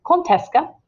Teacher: whenever we say those together, the D makes a T sound